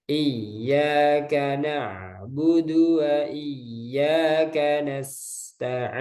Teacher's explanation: Nah, ya bertasdid itu ditekan. Ada hentakan, naber.